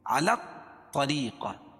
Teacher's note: را کے نیچے زیر ہے تو را باریک ہوگا